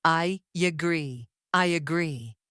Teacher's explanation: The I ends with a vowel sound, and agree begins with another vowel sound. To connect them, native speakers add a light Y sound, creating I agree. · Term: vowel linking